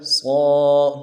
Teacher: صاد کے اوپر کھڑا زبر ہے، ایک الف دال میں کھینچیں گے، موٹا بھی کریں گے ، صا، دال کو نرم سے ادا کریں گے، قاف کو